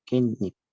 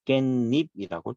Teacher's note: 발음은 깻잎이라고 발음이 니은 소리가 덧날 거예요. 이때가 이제 사이소리 현상을 그대로 적용시켜서 시옷을 표기해 준다라는 거예요.